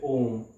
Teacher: प्लुत स्वर जिनको उच्चारण करने में ह्रस्व स्वर से 3 गुना और दीर्घ स्वर से 2 गुना समय लगता है, तो उनको प्लुप्त स्वर कहते हैं, जैसे ओम।